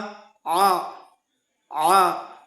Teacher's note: ஆயின் ஜபர் போட்டா ஆ, ஆ. இங்கே தொண்டையிலிருந்து வரும் ஆ